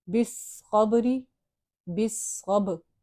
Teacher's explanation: تھوڑا سا ہم نے با کو ہلایا ہے قلقلہ کی وجہ سے